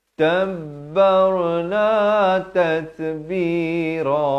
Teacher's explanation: Wa kullan tabbar, bar dia bukan bar, tak betul di ra di sini dibaca tebal · Tat ada bunyi hamas ya, bunyi angin di situ.